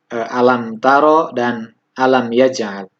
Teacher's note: Cara membacanya dengan menyuarakan mim mati dengan jelas di bibir serta mulut tertutup. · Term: izhar syafawi